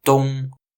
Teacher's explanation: the unaspirated T is very similar to English D. In fact, they may even be indistinguishable.